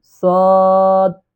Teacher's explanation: সোয়াদ না সঠিক উচ্চারণ হলো সদ তিন আলিফ টান দিয়ে পড়তে